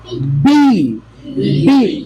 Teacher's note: Air stop होता है, block होता है, then there is explosion, sudden explosion. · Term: कॉन्सोनेंट साउंड